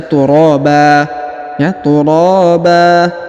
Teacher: huruf RO dipanjangkan dua harakat ya karena di depannya terdapat Alif